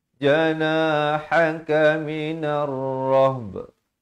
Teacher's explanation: Sebahagian ba itu dibunyikan dan diberikan tanda mati mendatang kalau kita waqaf di situ.